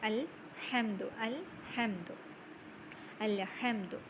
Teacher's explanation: and ha from the mid throat